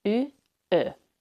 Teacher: And the last vowel is a rounded front vowel, ö.